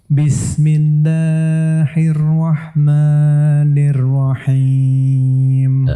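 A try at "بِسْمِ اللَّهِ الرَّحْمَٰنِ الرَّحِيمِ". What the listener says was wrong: Antum kurangin sedikit matnya. Bismillahirrahmanirrahim.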